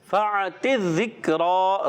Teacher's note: را پر کھڑا زبر، ایک الف کھینچ کر ادا کریں گے اور حرکات کو کھینچیں گے نہیں